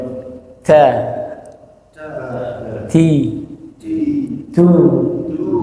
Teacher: ta itu ada sedikit percikan. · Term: hams